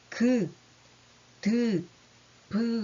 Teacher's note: 그래서 파열음이라고 하는 것들이 있는데요. 보통 브 이렇게 공기를 약간 막았다 탁 터트리는 소리가 파열음에 해당합니다.